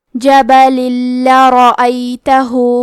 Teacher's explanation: لام حروف الادغام بغیر غنہ میں سے ہے تو ہم تنوین کو لام میں ملا کے بغیر غنہ سے لیکن تشدید کے ساتھ یہ حکم کو ادا کریں گے